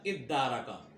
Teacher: تدارکا، تا کو دال سے بدل دیا تو کیا ہو گیا؟ دارکا، اور پھر دال کا دال میں ادغام کیا، دال کی حرکت کو ختم کر کے